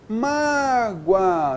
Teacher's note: semivogal mais vogal, o som cresce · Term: ditongo crescente